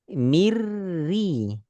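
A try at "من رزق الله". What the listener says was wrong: Ya, tapi lembutkan getarannya.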